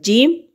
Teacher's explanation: جیم زبان کے درمیان تالو کے اوپر والے حصے سے مل کر ادا ہوتا ہے